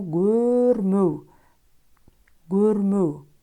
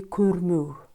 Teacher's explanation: «Көрмеу» произносится как «гөрмеу», «гөрмеу». «К» произносится как «г», потому что звук «к» идет после гласного звука «о».